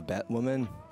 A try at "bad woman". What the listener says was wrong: You sound like you're saying bat woman. like Batman, bat woman.